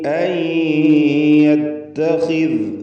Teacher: അൻ സാക്കിനത്ത നൂൻ ശേഷം യാ, ഇദ്ഗാം ബിഗുന്ന നാഖിസ് നൽകി.